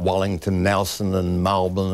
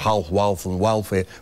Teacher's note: We distort our vowels before letter, poor old letter L